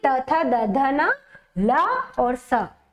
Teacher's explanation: आपके वो सारे किसके द्वारा उत्पन्न माने किसके द्वारा उच्चारित होंगे दंत के द्वारा उच्चारित होंगे · जो आपकी जिह्वा है, है ना, वो जो है आपकी दांत से आकर टकराती है · दंत, है ना, यानी दांत से उच्चरित होने वाले होंगे